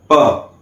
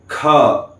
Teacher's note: जब मैं प कहता हूं तो आखरी में क्या सुनाई देता है? अ